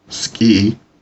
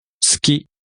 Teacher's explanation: Notice the difference in pronunciation between English ski, one syllable, no aspiration, and the Japanese 好 き、 likes, two syllables with u unvoiced or dropped, but with slight aspiration of k